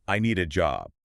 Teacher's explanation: The D in need links to the A.